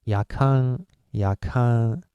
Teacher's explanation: the last nasal sonant is not n sound. It's Japanese nasal consonant.